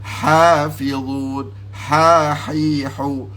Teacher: Dia kata ha wastul halqi, ha yang keluar daripada tengah halqum saja